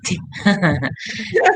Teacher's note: This sound is produced with the tip of the tongue placed in the alveolar ridge. The airflow is obstructed and then released without making the vocal fold vibrate.